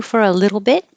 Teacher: the T's change to D's, and you won't hear the T at the end. You just hold the tongue in the T position.